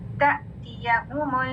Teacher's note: تأتیہم حمزہ ساکن جھٹکے کے ساتھ, یہ تا نہیں ہے, تا حمزہ ساکن جب بھی آئے گا اس میں جھٹکا ہے